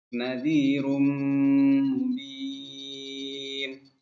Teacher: Dimasukkan tanwin ke mim disertai dengung. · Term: idgham bi gunnah